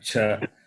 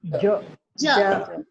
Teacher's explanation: ja, when you say, you can feel the vibration in the throat. That is soft.